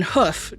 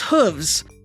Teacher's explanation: the /f/ in “hoof” changes to a /v/ when it is made plural